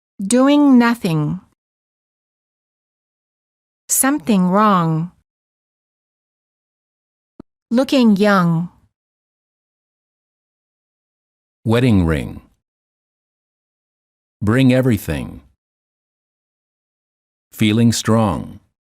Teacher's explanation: the tip of the tongue is down not touching anywhere the back of the tongue is up touching the soft palate